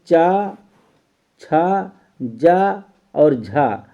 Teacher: चा, छा, जा, झा को स्पर्श संघर्षी वर्ण कहते हैं